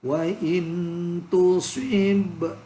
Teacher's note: ada ba mati dibaca mantul qalqalah